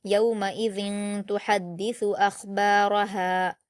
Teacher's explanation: اس میں خا کو پر پڑھا جائے گا اور را کو پر پڑھا جائے گا، باقی تمام کو باریک پڑھا جائے گا۔